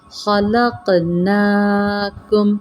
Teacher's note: لق قوف پر قلقلہ وقف کی صورت میں جزم کی صورت میں یہاں پہ قلقلہ کریں گے اور نمایاں پڑھیں گے قلقلہ والے حرف کو